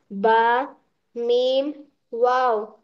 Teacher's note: 16वां मखरज शफवी दोनों होठों से तीन हुरूफ ब मीम वाव गैर मद्दा निकलते हैं